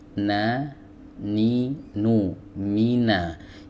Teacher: Huruf nun keluar dari ujung lidah ya bertemu dengan gusi. Di atasnya na, ni nu mina.